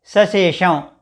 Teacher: ష పలికినప్పుడు నాలుక కొనను మడత పెట్టినట్టుగా చేసి ఉచ్చరించాలి